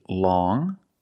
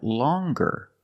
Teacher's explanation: long with the sound which is a nasal sound. Long. But then you have longer, where we have the hard G sound. Longer. With the nasal sound plus the hard G.